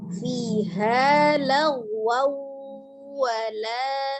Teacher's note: Jadi asalnya wan menjadi waw, kemudian bi gunnah, dengan dengung, maka ditahan 2-3 harokat, suaranya dimasukkan ke rongga hidung. Setiap gunnah suaranya masuk ke rongga hidungnya, al-khaisun.